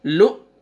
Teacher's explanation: حمزہ کے اوپر سکون ہے تو جھٹکے کے ساتھ پڑھیں گے